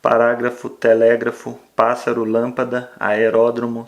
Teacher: perceber que a antepenúltima sílaba é a mais forte essa palavra é proparoxítona